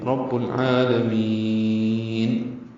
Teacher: عین کو دو حرکات لمبا کریں گے، کھڑا زبر ہے، قائم مقام مد اصلی، لام کو جلدی سے پڑھیں گے اور میم کو لمبا کریں گے